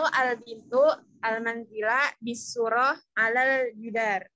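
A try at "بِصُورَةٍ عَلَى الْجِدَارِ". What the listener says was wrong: Bisurati alal jidari. Ya, bacanya harokat akhirnya dibaca supaya kamu paham tuh. Ya, terbiasa dengan bacanya.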